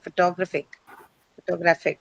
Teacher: Because in photographic graph is the one that is stressed, right?